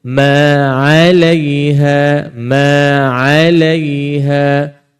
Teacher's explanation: huruf Ain tak berat tuan-tuan huruf Ain ringan sama dengan huruf ha pedas jangan kita beratkan Ain tersebut bunyinya ma alaiha ma alaiha dan